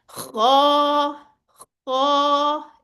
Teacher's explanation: और यहाँ पे क्या चीज काम आएगी, जो मिरर अभी आपको मैंने बताया था, मिरर आपके सामने होगा, आपने उसमें अपने होंठों की पोजीशन देखनी है, उनको गोल नहीं करना, बल्कि कैसे अदा होगा, ये भी हरूफे हलकी में से है, हलक से अदा होगा।